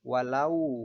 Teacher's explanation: bertemu dengan huruf wau sukun maka berlaku hukum bacaan Mad layyin cara membacanya adalah dibaca lunak sepanjang 2 harokat